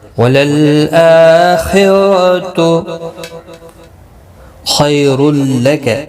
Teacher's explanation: خا حروف مستعلیہ ہے، پر پڑھا جائے گا ، خیالین ہے، تھوڑا نرمی کے ساتھ کھینچ کر ادا کریں